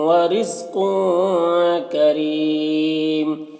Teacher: اور تنوین جو ہے، تنوین کے بعد کاف حروف اخفا میں سے آ رہا تو تنوین میں اخفا ہوگا